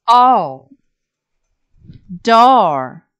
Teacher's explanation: Your next pure vowel monophthong sound is oh.